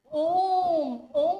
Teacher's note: ओ को बोलने में तीन मात्रा से ज्यादा समय भी लग सकता है। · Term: प्लुत